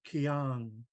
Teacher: just a regular K from the front of the mouth